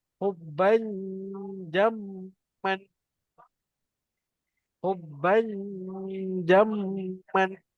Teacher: Hubban. Ingat tengah lidah kena naik ke atas. Sebab dia bertemu dengan ja.